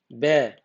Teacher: बे आपका बोला जाएगा आपका दंतोष्ठ, यानी दांत से भी बोला जाएगा और प्लस ओष्ठ से भी बोला जाएगा। इसलिए इसे क्या कहेंगे, दंतोष्ठ कहते हैं इसे, दंतोष्ठ।